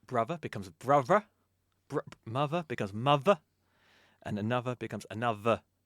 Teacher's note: the voiced th, like the th in brother, which normally gets replaced with a v.